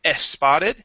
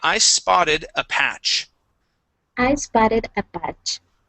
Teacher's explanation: practice removing the e in front of spotted you had said es spotted so we're going to say I